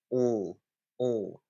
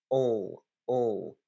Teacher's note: the tongue is slightly further back in the mouth instead of L at the front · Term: dark l